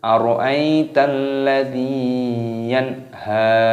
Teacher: Yanha nun sukun bertemu ha, hukumnya dibaca idhar halqi. Cara membacanya itu dengan cara jelas, tidak boleh berdengung.